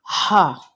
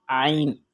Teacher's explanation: ہا تھوڑا سختی سے ادا ہوگا، جیسے کہ زور دے کر ہم کہتے ہیں ہا، اور عین اس کے ضد میں نرمی سے نکلے گا، عین۔ اور حمزہ اور ہا یہ تو بالکل نارمل، جیسے کہ ہم عام بات کرتے ہیں اسی انداز میں نکلیں گے۔